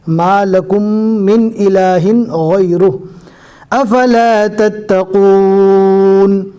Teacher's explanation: جزم والی میم کو نہیں پڑھنا ہے، ڈائریکٹ کاف کے پیش کو تشدید والے میم کے ساتھ ملانا ہے